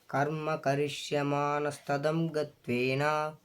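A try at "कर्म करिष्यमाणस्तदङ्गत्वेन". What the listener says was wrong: నా స్తదంగత్వేన అన్న దగ్గర తలకట్టు ఉన్నది కనుక ఆడ ఎక్కువ తీసుకెళ్ళొద్దు. స్తదంగత్వేన అంతే, ఆగిపోవాలి అక్కడే. కర్మ కరిష్యమానస్తదంగత్వేన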